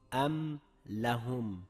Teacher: Bu oyatdagi mimni ochiq bildirib talaffuz qildik, xuddi boshqa harflarimiz kabi. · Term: izhor